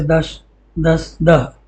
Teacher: पश्चिमी अवहट्ट में स का ह हो गया है, जैसे दश, दस, दह।